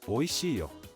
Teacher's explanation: When sharing information, yo is often used with a rising pitch, drawing the listener's attention and inviting their participation.